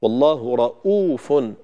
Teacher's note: المد بمقدار حركتين في رؤوف لا بد منه في نطق هذه الكلمة